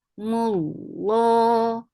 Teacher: Lafz Jalala will be heavy because there is Dhamma before it. And Lafz Jalala is always long.